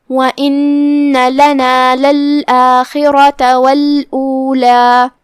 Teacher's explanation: یہاں را پہ جو کہ زبر ہے لہذا حکم ہوا تفخیم، تو ہم را کو بھاری آواز میں پڑھیں گے